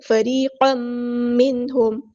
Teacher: فریقا منہم، یہاں پہ ادغام مع الغنہ، ایک الف کے برابر ادغام کرتے ہوئے رکیں گے